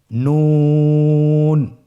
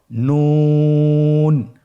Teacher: নুন হরফটি উচ্চারণের ক্ষেত্রে অবশ্যই পাতলা করে উচ্চারণ করতে হবে এবং তিন আলিফ টেনে পড়তে হবে